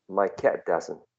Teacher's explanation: So that t is unreleased. It's not plosive, but just there's a small pause, small stop of the airflow.